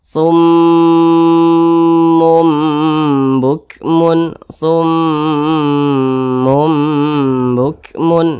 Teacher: Gunnah musyaddadah, cara bacanya itu ya digunakan itu didengungkan, artinya didengungkan. Nah, didengungkan, dipanjangkan 2 hingga 3 harokat, 2 hingga 3 harokat. Nah, 2 hingga 3 harokat atau kira-kira 2 hingga 3 ketukan.